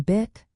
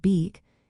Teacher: the difference between the vowels in bit and beak is a subtle change in tongue height and duration